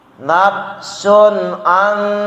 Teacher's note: Nafsun an, nun mati bertemu nun, an didengungin. Idgham bigun, nun mati bertemu nun.